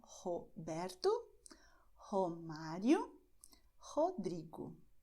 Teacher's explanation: Você vê que para essas palavras, a primeira letra R no começo eu usei a garganta e para a segunda eu usei a ponta da língua